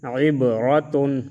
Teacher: با میں قلقلہ اور را کو موٹا پڑھیں گے